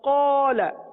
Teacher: الف کو پر پڑھیں گے کیونکہ الف سے پہلے والا حرف قاف پر ہے